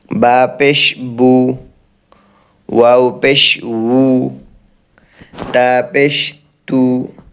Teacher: পেশ উচ্চারণ করার সময় মুখের কাইফিয়ত হবে, মুখের অবস্থা হবে, অর্থাৎ মুখটা গোল হয়ে যাবে, দুই ঠোঁট নাকের আগার মতো চোক্কা হয়ে যাবে, তখন পেশ উচ্চারণ হবে